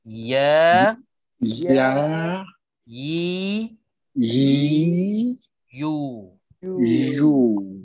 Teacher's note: kekalkan sifat ya yang tipis dan tempat keluarnya di tengah-tengah lidah